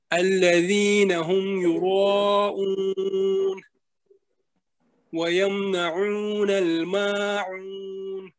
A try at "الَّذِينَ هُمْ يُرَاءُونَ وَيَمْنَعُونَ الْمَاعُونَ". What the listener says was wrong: ٹھیک ہے جی، very good,